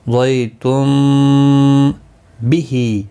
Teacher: ہا کے نیچے کھڑی زیر ہے، ایک الف کی مقدار کے برابر کھینچ کر پڑھیں گے